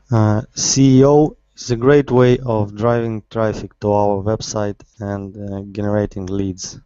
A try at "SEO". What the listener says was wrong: Okay, so first of all, instead of CEO, it's SEO.